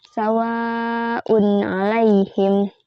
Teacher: Mat ini bertemu dengan hamzah dalam sebuah kata. Cara membacanya dipanjangkan hingga 5 harokat. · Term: mat wajib mutasil